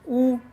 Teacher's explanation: होठ की आकृति गोल बन रही है ना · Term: वृत्ताकार